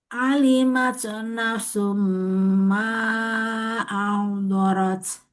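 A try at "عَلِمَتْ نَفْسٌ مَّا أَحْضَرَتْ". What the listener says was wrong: Kurang sempurna hamasnya fa. Nafsum. Diulangi.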